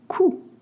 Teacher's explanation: Coût, C-O-U-T, means the cost. You don't pronounce the T at the end, and O-U makes the sound O.